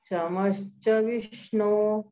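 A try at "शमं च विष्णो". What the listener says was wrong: Not ish sound, inj sound. Samancha.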